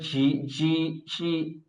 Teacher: খেয়াল করেছেন বাতাসের একটা আওয়াজ আসছে, ঝি, এরকম না।